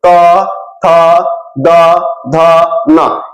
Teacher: जीभ जो है ना ये दांत पे जाके स्पर्श कर रहा है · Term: दांत से